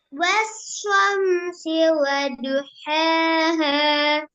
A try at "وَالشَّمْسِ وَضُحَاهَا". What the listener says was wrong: حاها. சின்ன ஹேயும் பெரிய ஹேயும் சின்ன குழப்பம் மட்டும் வந்துருந்துச்சு. அந்த குழப்பத்தை கிளியர் பண்ணிக்கிறேன். இந்த நுணுக்கமான மிஸ்டேக்கை பிடிச்சுக்கணும் நீங்க.